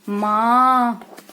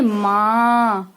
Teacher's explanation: तो नाक और मुंह से दोनों से हवा निकलती है,